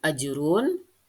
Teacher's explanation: dibaca dengan memantulkan yaitu di disebut dengan qalqala ajrun dibaca dengan ajrun itu jimnya dipantulkan karena dia adalah huruf qalqala · itu jimnya dipantulkan karena dia adalah huruf qalqalah